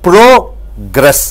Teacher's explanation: Gress should go down, prog should go up.